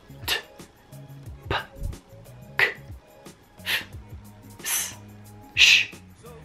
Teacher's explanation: Dall'altra parte ci sono suoni voiceless, ovvero quando dici questi suoni non c'è vibrazione nella gola.